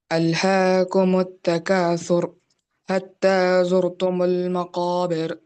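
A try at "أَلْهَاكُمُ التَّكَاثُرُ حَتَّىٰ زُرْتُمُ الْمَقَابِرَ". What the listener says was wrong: ایک منٹ، یہ دو آیتوں میں ایک تو سا اچھی طرح ادا کرنا، آپ صحیح پڑھیں، الہاکم التکاثر، ٹھیک ہے۔ دوسری آیت میں حتی، ہا ادا نہیں ہوا، زرتم المقابر، قاف کو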